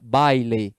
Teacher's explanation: Quando eu falo baile, o encontro do A com o I, né? Eu falo de uma vez só. Então, a gente chama isso de ditongo.